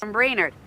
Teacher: tight forward fronted e sound at the end